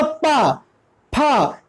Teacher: तो पा हमने जैसे बोला पा, फा, तो हमारे जो ओठ है दोनों टच कर रहे हैं, इसलिए बोलते हैं इसे ओष्ठ वर्ग